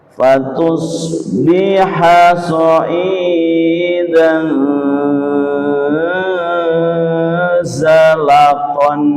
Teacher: fathah tanwin bertemu dengan za dibaca dengung dengan lama